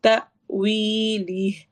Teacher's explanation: تأویلی، تا حمزہ کے اوپر جب بھی جزم آتی ہے تو ہم وہاں پر جھٹکا دے کے پڑھتے ہیں، تأویلی، وی کو لمبا کریں گے دو حرکہ